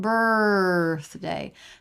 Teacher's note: birth day no vowel just an R sound held out birthday tongue tip has to come through for that unvoiced th · Tongue tip has to come through for that unvoiced TH. Birthday is the linking a vowel to vowel, in this case diphthong to vowel.